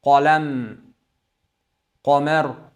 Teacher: Jahr, shidda, isti'ola, infitoh va qalqala sifatlari ekan. Qof harfiga qof harf fatha bilan kelganda yug'on holatda o'qishimiz kerak.